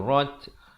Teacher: dibunyikan hamasnya di atas ta, itu bunyi angin tu